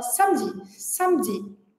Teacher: a gente desaparece com o E schwa nessa palavra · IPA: /ə/